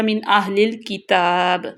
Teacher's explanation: اب نون ساکن کے بعد حمزہ آ گیا تو یہاں پہ اظہار ہوگا